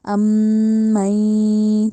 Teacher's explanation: मीम पे भी गुन्ना और नून पे भी गुन्ना, इन दोनों को नाक में बात लेके जाएंगे